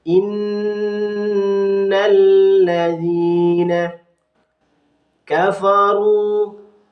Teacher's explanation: Lalu di sini ada kasrah diikuti iya sukun, ini disebut dengan bacaan mad tabi'i, harus dibaca panjang ya, panjangnya satu alif